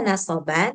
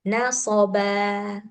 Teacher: pergantian tanwin nasab pada saat berhenti dengan alif yang dipanjangkan seukuran dua harkat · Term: mad iwad